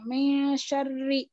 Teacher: रॉ पे जेर रहने की वजह से इस रॉ को बारीक पढ़ेंगे